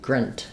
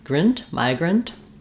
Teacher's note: rather a reduced vowel in that second syllable, grunt. So there's a schwa. I've written it for you here with no vowel at all because that's very reduced.